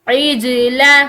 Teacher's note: یہاں پر جیم قلقلہ کے ساتھ ہے تو ہم اس کو ہلا کر پڑھیں گے۔ عجل، یہاں پر ہم اس کو عجل اس طرح نہیں پڑھیں گے بلکہ اس کو ہلاتے ہوئے۔